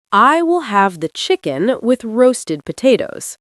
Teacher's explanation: The L in will goes up to the roof of your mouth.